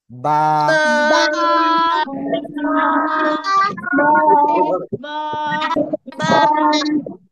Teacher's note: দুই ঠোঁটের ভিজা অংশ থেকে উচ্চারণ হয়